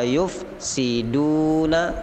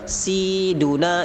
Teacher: si pendek, du panjang, jangan terbalik, jangan siduna, itu salah.